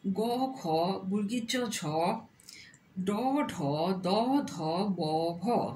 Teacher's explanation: ব্যঞ্জন বর্ণমালার স্পর্শ বর্ণগুলোর প্রত্যেক বর্গের তৃতীয় ও চতুর্থ বর্ণ গাম্ভীর্যপূর্ণ হওয়ায় তাদের ঘোষ বর্ণ বলা হয়